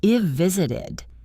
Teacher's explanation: You have to train your ear to catch that tiny v sound to know it is present perfect.